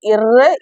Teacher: மேல்வாயை நாக்கின் நுனி வருடுவதால் பிறப்பது